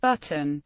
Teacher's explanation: The only environment in which T-glottalization is standard in American English is before syllabic n, as in button, bn. On the other hand, North American English has undergone some sound changes not found in other varieties of English speech.